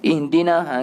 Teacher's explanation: Jangan lama sangatnya. Ihdina jangan lama sangat. Maknanya dengan di tu dua sebutan tu laju.